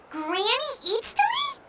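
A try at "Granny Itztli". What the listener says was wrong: Yes, Granny Eatsley. But emphasis on Eatsley, not Granny.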